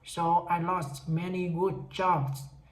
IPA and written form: soʊ, aɪ lɔst ˈmɛni gʊd dʒɑbz. (So, I lost many good jobs)